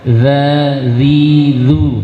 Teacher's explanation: huruf zal, maka cara mengucapkan lidah keluarkan sedikit dari ujung gigi situ.